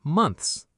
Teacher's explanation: The ending has 3 consonant sounds, N, TH, and S, all together.